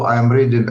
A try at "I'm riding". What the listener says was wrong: So everything was okay except I'm riding, not reading. I'm riding.